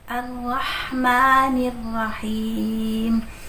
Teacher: Huruf ro dia tidak terlalu bergetar ya.